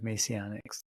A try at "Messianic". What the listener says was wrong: Messianic. Messianic. You're saying Masonic.